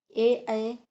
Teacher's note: ए कंठ तालव्य हैं और कंठ तालु से बोले जाते हैं